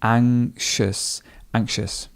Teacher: And sometimes you may not even hear the k sound.